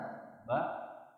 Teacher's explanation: ba dari kedua bibir atau asyafatan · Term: huruf ba